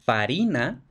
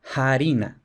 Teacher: F inicial latina se solía aspirar en la mayoría de las ocasiones. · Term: aspiración